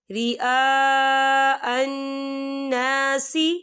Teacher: تو ہم اسے 4 حرکت کے برابر کھینچ کے پڑھیں گے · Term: مد